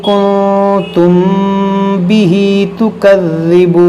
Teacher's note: میم ساکن کے بعد یہاں با ہے تو یہاں پر اخفاء شفوی ہوگا، یعنی یہاں پر بھی غنہ کریں گے اور یہاں پر بھی غنہ کریں گے.